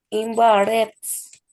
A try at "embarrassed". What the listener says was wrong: No way, not Barretts. Barrassed. Barrassed.